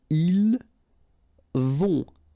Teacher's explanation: Final T not pronounced.